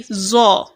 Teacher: Instead of saying za or something like that, I will say zo. That is, I've made it to become thicker.